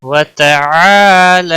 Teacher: کسمک وتعالی، الف مدہ ہے، ایک الف کے برابر کھینچ کر پڑھیں گے، لام کے اوپر کھڑی زبر ہے، ایک الف کے برابر کھینچ کر پڑھیں گے